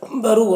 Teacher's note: را کے اوپر پیش ہے، را کو پر پڑھیں گے